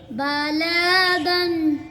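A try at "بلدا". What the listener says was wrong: ऊपर उंगली रखो, लाम को क्यों लंबा कर दिया? बलदन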